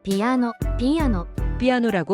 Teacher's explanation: piano, piano, 피아노라고 발음합니다. 첫 음절 삐가 반탁음입니다. 입술을 다물었다가 터뜨리면서 삐 소리를 내야 합니다.